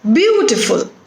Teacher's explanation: three syllables are there in this word and the stress is on the first syllable